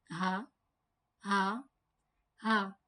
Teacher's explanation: It comes out from the lower part of the throat. It is one of the throat letters.